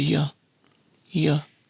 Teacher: T and schwa sound so it's not bad it's but but U is again reduced to your your with a short vowel in both examples